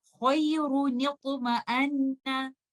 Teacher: You will give the sakin letter noon a kasra, and you will join it with letter ta in order to avoid the meeting of two sakin letters